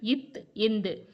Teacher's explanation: மேல்வாய் பல்லின் அடியை நாக்கின் நுனி பொருந்துவதால் பிறக்கும் எழுத்துக்கள்